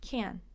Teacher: this would be an example of having more of a D at the end instead of that stop T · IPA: /ˈkænd/